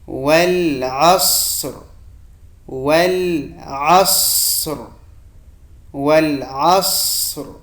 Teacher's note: عین د صاد سره جنګوم او صاد ډک وایم او په پای کې د را आवाज ښکاره کوم.